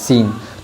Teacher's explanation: سین جب ادا کرے گے تو دونوں دانتوں کو بند کر دے گی، جس طرح ہم سیٹی جو ہے تو مارتے ہیں، اسی طرح سین ادا کیا جائے گا